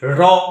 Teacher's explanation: দাঁতের মূলে, মূল দেশে যেখানে দাঁতের শেকড়টা রয়েছে, সেখানে জিহ্বা টাচ করছে বলে এইটাকেও দন্তমূলীয় ধ্বনি বলা হয়।